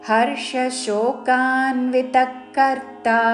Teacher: విసర్గ ఉచ్చారణ ఖ లాగా చేస్తూ · రాకి మూర్ధన్య షావత్తు పక్కన తాళవ్య షో